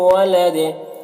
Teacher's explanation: ولدن یہاں پر جیم وقف جائز کی علامت ہے، یہاں پر وقف کریں گے تو دال کا جو دو پیش کی تنوین ہے وہ سکون سے بدل جائے گا، تو پھر یہاں پر قلقلہ ہوگا دال میں، وقف کی صورت میں دال میں قلقلہ ہوگا